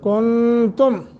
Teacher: نون ساکن کے بعد تا حروف اخفا میں سے ہے، اخفا کریں گے